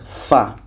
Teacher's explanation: Fa, fa, bibir bawah menempel ke gigi seri atas. Fa. Bunyinya samar, mendekati tempat keluar huruf fa.